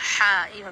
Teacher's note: গলার ভিতর থেকে একটা গরম হাওয়া হা উচ্চারণ হবে